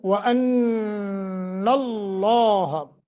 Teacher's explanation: وَأَنَّ اللَّهَ، نون مشدد ہے، غنہ کریں گے، لفظ اللہ کو پر پڑھیں گے، تفخیم کریں گے، کیوں؟ ما قبل فتح ہے۔